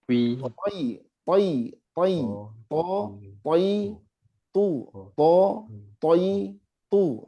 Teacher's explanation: Coba perhatikan bibir saya nggak gerak tapi tetap dia bunyi tebal karena pakainya lidah.